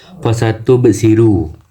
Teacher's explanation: Lalu di ayat yang kelima ada di bagian fasatu besiru, di bagian tub terdapat qalqalah sugra, yang dimana huruf qalqalah yang hurufnya sukun asli, cara bacanya huruf ba-nya dipantulkan dan dipantulkan kecil.